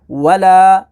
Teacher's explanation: واو زبر وا، لام کھڑا زبر لا، ولا، لام کے اوپر کھڑی حرکات ہے تو اسے ہم نے حروف مدہ کی طرح کھینچنا ہے